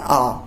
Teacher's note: दूर खड़े व्यक्ति को बोलते हैं तो एक स्वर को बहुत लंबा खींचा जाता है, वो क्या होते हैं, प्लुत स्वर।